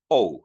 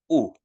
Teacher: omicron upsilon no se va a pronunciar como ou sino como u